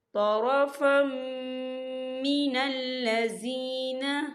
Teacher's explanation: تو یہاں پر ادغام ہوگا اور ہم اسے غنّے کے ساتھ پڑھیں گے۔